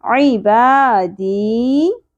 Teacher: या साकिन से पहले ज़ेर हरफ मद्दा, एक अलिफ के बराबर खींचेंगे